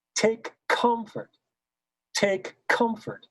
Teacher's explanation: If it's two, then the K, the first K sound is softer, and the second K sound is louder.